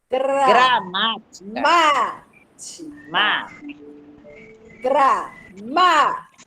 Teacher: Última sílaba, penúltima sílaba, antepenúltima. Justamente é a antepenúltima sílaba que está acentuada.